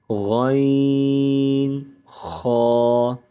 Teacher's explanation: غین، خا، یہ دونوں حرف حلق کے منہ کی جانب سے ادا ہوتے ہیں۔ ان کو حروف حلقیہ کہتے ہیں۔